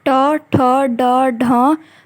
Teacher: ट वर्ग का उच्चारण स्थान मूर्धा।